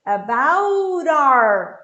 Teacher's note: About acaba em T. About our. Ele vira um flap T.